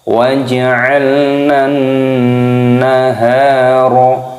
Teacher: Karena di sini ada huruf nun yang berharokat tasydid. Hukumnya dibaca gunnah. Cara membacanya yaitu didengungkan. Dan di sini ada huruf ha yang berharokat fathah dan huruf setelahnya ada alif, ini matobi'i dipanjangkan.